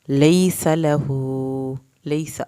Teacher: सीन की ज़बर को नहीं खींचना, सीन को सीटी के आवाज़ के साथ पढ़ना है